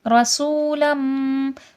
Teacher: رسولم سو میں صفیر ہے، سیٹھی ہے اور حرف مدہ ہے، واو ساکن سے پہلے پیش ہے، کھینچ کے پڑھا جائے گا. لم میں میم مشدد غنہ ہوگا.